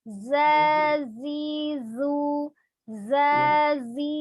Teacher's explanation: Kalau yang zai, ujung lidahnya itu bertemu dengan gigi seri bagian bawah. Ya. Jadi atau antara gigi seri atas dan bawah, tapi hampir bertemu dengan gigi seri bawah.